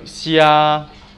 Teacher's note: Xia, A is a flat tone.